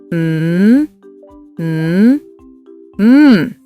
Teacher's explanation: Close your lips and hum.